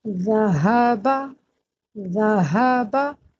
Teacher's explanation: ہاء کے آخر میں یہ الف ہے تو اس کو پڑھتے ہوئے ہمیں ایک الف کے برابر ہم کھینچیں گے